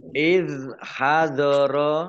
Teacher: Mat wajib muttasil dibaca panjang 5 harokat. Iz hadoro, zalnya zal sukun bukan kolkolah ya, jangan dimantulkan. Iz hadoro ya uba ain ya uba qaf domah wawu sukun mat tabi'i panjang 2 harokat.